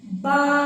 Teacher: दोनों होठों को जोड़ने से बा की अदायगी होती है।